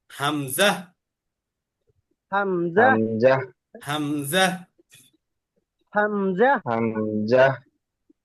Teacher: হামজা কন্ঠ শুরু থেকে দ্রুত উচ্চারণ করতে হয়